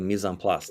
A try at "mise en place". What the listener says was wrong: No, you have to pronounce the CE in French. It's Mise en Place.